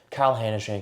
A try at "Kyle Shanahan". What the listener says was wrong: You switched Kyle. K and the Sh.